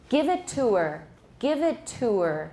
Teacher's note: if it's a function word that starts with h and it's not stressed what can we do with the h we can omit it